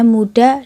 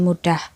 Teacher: tiadanya bunyi H pada kata pertama dan adanya bunyi H pada kata kedua, menyebabkan kedua kata itu berbeda-beda makna.